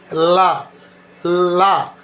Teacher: చేయకుండా సాదాగా మనం దాన్ని చెప్పేది ల అంటే మన టీత్స్ కి మాత్రమే మన టీత్ కి మాత్రమే తగలాలి టంగ్ అది ల ల అంటారు దాన్ని ళ అంటే ఫోల్డ్ చేయాలి టంగ్ ని